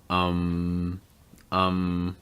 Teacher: notice that schwa sound at the start so again you're just going to relax your mouth raise that